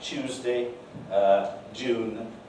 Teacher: sequences, T yod, D yod, are replaced by palato-alveolar affricates, cha and ja. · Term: yod coalescence